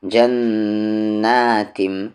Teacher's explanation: نون پہ تشدید ہے، غنہ کے ساتھ پڑھیں گے، یعنی آواز کو ناک میں رکھیں گے